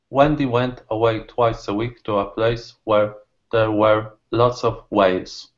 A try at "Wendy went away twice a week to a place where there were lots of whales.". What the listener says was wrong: your pronunciation is very good, and I noticed that you do some really nice things like combine the sounds together,